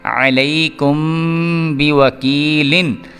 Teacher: میم ساکن کے بعد با آ رہا ہے تو یہ بھی پھر کیا ہو گیا، اخفاء شفوی والا جو قانون ہے اس کے مطابق یہاں پہ بھی ہم نے غنہ کرنا ہے۔